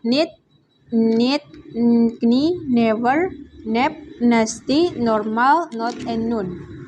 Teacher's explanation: voice alveolar nasal sound N